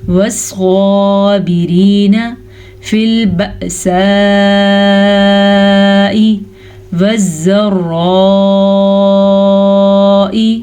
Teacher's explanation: مد کو لمبا کرنا ہے تقریباً 4 سے 5 سیکنڈ کے درمیان تک. حمزہ کو نرمی سے پڑھنا ہے.